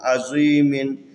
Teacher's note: یہاں پر زا حروف استعلا میں سے ہے، اس کو موٹا کر کے پڑھنا ہے